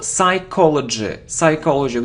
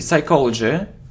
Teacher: We don't pronounce P